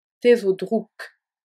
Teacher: Le K de drouk se prononce K car il est suivi d'un silence. Il garde sa forme sourde.